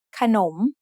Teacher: There is an unwritten sara after kho kai, and there is an unwritten sara o between nonu and mo ma. The first syllable ka is low tone, and the second syllable nom is rising tone because the high class consonant kho kai has an effect on both syllables.